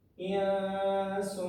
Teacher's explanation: Huruf qa ini termasuk dengan huruf ikhfa. Qaf dan sin adalah huruf ikhfa, maka dua-duanya dibaca dengan ikhfa. Cara dengungkan 2 ketukan.